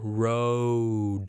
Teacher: So diphthong, like the word row, you don't have a pure O